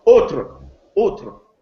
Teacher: You notice that the final S is no longer pronounced.